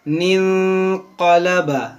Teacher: नून साकिन के बाद हुरूफ इख्फा है, तो इसको हम यहाँ पर गुन्ना भी करेंगे